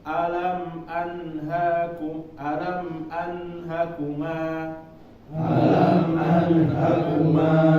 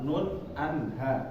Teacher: Sedikit ya Bapak, ini kenapa kita membacanya menjadi izhar atau menjadi jelas, karena dia adalah huruf-huruf yang keluar dari tenggorokan yang apabila nanti Bapak kalau misalnya dibacanya dengung itu susah ya.